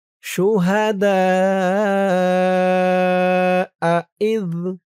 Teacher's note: চার আলিফ টান মধ্যে মুত্তাসিল